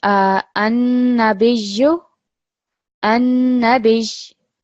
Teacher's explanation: So again, remembering even when pausing, even if it's taking a sukoon, if it's becoming a sakin letter, there's still going to be that emphasis from the shadda.